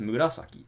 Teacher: It's 4 syllables, and it's nakadaka. And it just happens to only have the accent on the second syllable